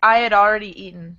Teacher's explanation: The I had tends to glide together, and it almost turns into like a Y or a W sound, depending on what comes before the had.